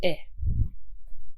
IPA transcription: ɪ